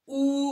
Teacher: उ म्हटलं की बॅकचा उंचावतो